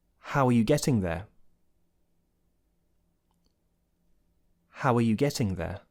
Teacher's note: notice the linking W there the intrusive W it's called